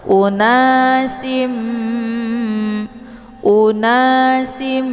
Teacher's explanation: mim sambil ditahan sehingga terbentuk suara yang mendengung. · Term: idgham bi gunnah